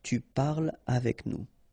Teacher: So no liaison here between parle and avec